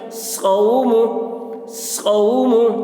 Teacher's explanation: اوفی، اوفی، حولا، حا واو زبر حو، واو ساکن سے پہلے زبر ہے، واو لین ہوا، اس لیے واو لین کو نرم آواز کے ساتھ جلد پڑھیں، معروف پڑھیں، مجہول آواز سے بچیں